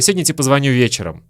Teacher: И вы слышите, что «тебе» мы тоже произносим как «те».